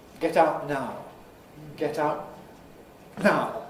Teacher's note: I can do it with a glottal stop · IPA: [ˈget aʊʔ ˈnaʊ]